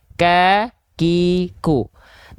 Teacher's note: huruf Kaf itu dia sifatnya percikan nafas saja ka ki ku jangan sampai lebih dari kadar percikan kalau dia